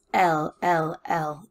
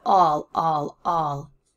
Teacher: if your mouth is loose and round it becomes L ll instead of all all all